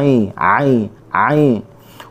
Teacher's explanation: huruf ain, halqum tengah